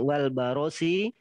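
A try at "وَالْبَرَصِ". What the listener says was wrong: Itu juga barosi bacanya baros, jangan wal barosi, seakan-akan ada alifnya. Nah, jadi bukan wal barosi tapi wal barosi, beda arti tadi.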